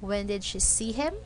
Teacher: Notice that from the word when up to the last word him, the intonation went up. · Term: rising intonation